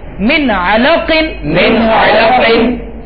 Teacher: دیکھیں عین اس کے مخرج سے ادا ہو اور قاف موٹا